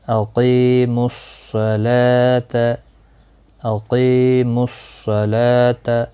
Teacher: دیکھیں یہاں پر حروف شمسی کا صاد آیا ہے ال کے بعد، تو ال نہیں پڑھا گیا، ڈائریکٹ صاد میم کے ساتھ ملا کر پڑھا